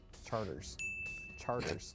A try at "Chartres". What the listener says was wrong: No, no, no, because if it were charters, the R would be after the E, like in the word charter school or charter.